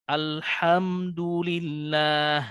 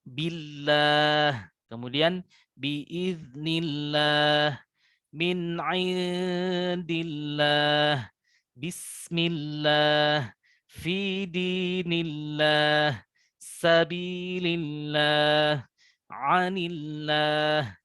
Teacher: lafaz Allah apabila huruf sebelumnya berharokat kasrah, maka terhukumi tarqiq atau tipis. Jadi tidak ada perubahan atau tidak ada sifat arid pada huruf lam tersebut.